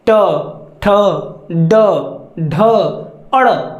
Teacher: जो आपकी जीभ का अग्र भाग है वह घूम कर के ऊपर वाले मुर्धा पर दांत के पीछे मसूड़े पर जाता है और वह प्रेशर देता है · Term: ट वर्ग